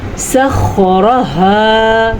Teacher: را کو تو ہم نے اس لیے پر پڑھنا ہے کیونکہ را کے اوپر زبر ہے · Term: را کو ہم نے پر پڑھنا